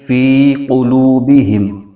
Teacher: فی قلوبہم، تو یہاں پر فی جو ہے اس میں یا مدہ ہو رہا ہے، اس کو ایک الف کھینچ کے پڑھیں گے، اور اس کے آگے قوف، یہ حروف مستعلیہ کا حرف ہے، اس کو موٹا کر کے پڑھیں گے۔ قوف کے آگے واو مدہ ہو رہا ہے، واو ساکن سے پہلے پیش ہے تو واو مدہ ہوگا، تو اس کو بھی ایک الف کھینچ کے پڑھیں گے